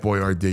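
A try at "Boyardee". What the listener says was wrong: you got the stress on the wrong spot.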